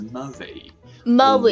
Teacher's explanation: Now we have the R sounds, which turn weaker and lippier. So Murray, like Andy Murray, turns into Murray.